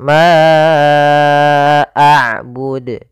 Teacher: kita panjangkan untuk huruf Ma panjangnya empat harakat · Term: Mad Jaiz munfasil